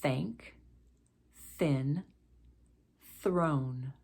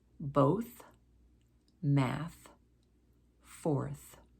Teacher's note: the th sound is formed by placing your tongue between your teeth and then letting the air flow out